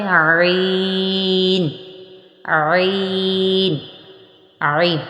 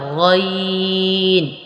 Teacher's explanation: عین کا مخرج حلق کا درمیان والا حصہ ہے اور غین کا مخرج وہی ہے جو اوپر خا کا مخرج تھا، غین یعنی حلق کا اوپر والا حصہ